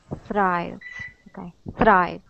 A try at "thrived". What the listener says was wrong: Okay, give me a good R sound there, okay? So instead of saying thrived and using a hard R, I'd like for you to say thrived. Thrived. Thrived.